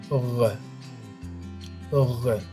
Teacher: this is an even heavier one oh notice that it is produced deep in the back of the mouth with a vibration of the vocal cords almost like throwing up over we have words like foreign [Music]